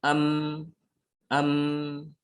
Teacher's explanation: memang bibir tertutup, tapi rongga hidung dia terbuka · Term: mim